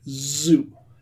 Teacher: should I feel my throat vibrating when I say that word? Yes, I should.